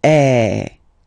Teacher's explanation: it's really open i mean the sound is really open and normally your mouth should be opened a little bit more